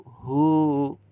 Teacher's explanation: Indahu 2 harokat. Keliru ketika kita membacanya indahumi. Itu cuma 1 harokat. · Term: madzillah qasirah